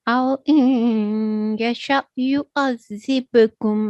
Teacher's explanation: ba is with a jerking sound and it is a medium jerk. Okay, because it appears in the middle of a word, it is going to be a soft jerking sound. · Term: Huruf Kalkala